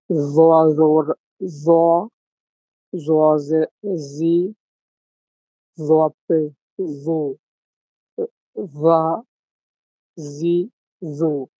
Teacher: 13 নম্বর মাখরাজ, জ, জাল, সা। জিহ্বার আগা সামনের উপরের দুই দাঁতের আগার সঙ্গে লাগিয়ে উচ্চারণ হবে।